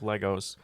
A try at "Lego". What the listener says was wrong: it's pronounced Lego, not Legos. Lego is plural.